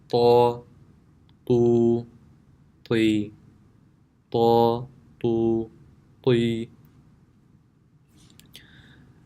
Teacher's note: The makhraj of Ta is the tip of the tongue when touching the roots of the upper two front teeth. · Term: full mouth